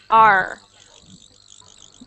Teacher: so you just want to make sure it's an R sound when you make the r your tongue isn't touching anything in your mouth it's like it's in the middle of your mouth arched back at the back